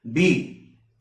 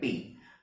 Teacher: So this is a voiced consonant. B is a voiced consonant. Unvoiced consonants is P.